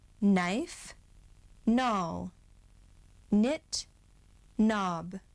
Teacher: When the words begin with KN, you just hear the N